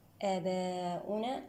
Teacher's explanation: آباؤنا، هنا تقدمت الهمزة على حرف المد، مد بدل. آباؤنا هنا في كلمة آباؤنا مد متصل واجب، يمد 4 أو 5 حركات.